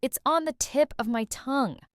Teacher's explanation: And notice the connected speech: It's on the TIP of my TONGUE. The words blend together.